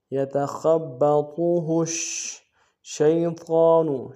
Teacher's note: یتخبطه الشیطان، شین کو یا کے ساتھ ملانا ہے، یا لین بغیر کھینچے پڑیں گے، خا کو موٹا ادا کریں گے · شین کے اوپر تشدید زور دیں گے، حروف فشی واضح کریں گے